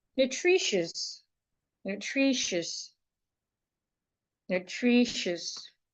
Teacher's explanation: The shwa is in the last syllable.